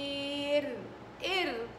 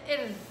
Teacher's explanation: ما فيها هوا، ما فيش فيها همس